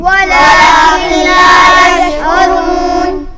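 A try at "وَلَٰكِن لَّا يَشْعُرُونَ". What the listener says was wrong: औरून नहीं पढ़ेंगे, उरून पढ़ेंगे। वलाकिन ला यशऊरून। यशऊरून। वलाकिन ला यशउरून।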